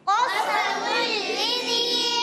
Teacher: قاف کو موٹا رکھیں گے، سین باریک سیٹی کے ساتھ